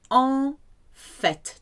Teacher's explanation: It's an exception because you hear the T at the end.